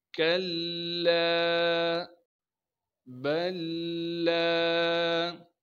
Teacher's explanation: ان دونوں لاموں کو، یعنی یہ پہلا جو لام ہے ساکن ہے، اس کے بعد ایک اور لام آ گیا، اس لام کو ہم اس لام کے ساتھ ادغام کر دیں گے · لام کے بعد الف مدہ ہونے کی وجہ سے لام کو ایک الف کے مقدار کھینچیں گے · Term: ادغام متجانسین